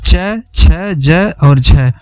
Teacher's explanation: वे व्यंजन जिनके उच्चारण का समय अपेक्षाकृत अधिक होता है और उच्चारण के बाद वाला भाग संघर्षी हो जाता है, तो उन्हें स्पर्श संघर्षी कहते हैं। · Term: स्पर्श संघर्षी व्यंजन